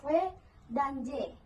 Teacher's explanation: Artikulator saling mendekat tetapi tidak sampai menimbulkan hambatan total atau friksi yang kuat, bersifat seperti vokal.